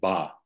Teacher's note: To make the b, I close my lips. And then to make the ah after it, I have to open that closure and then start making an ah. And the key component of the ah that enables us to hear it clearly is our vocal folds are opening and closing very rapidly.